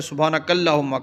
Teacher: سبحانک اللہ موٹا کرنا ہے اور اس کو پر پڑھ کے اوپر کھینچنا ہے۔ اس کے بعد ہے ہم پہ غنہ کرنا ہے، تھوڑی دیر رکنا ہے، سبحانک اللہم ہم۔